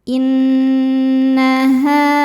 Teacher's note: Sebab ada ha dengan baris fathah panjang. Cara bacanya dipanjangkan dua harakat. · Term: mad thobi'i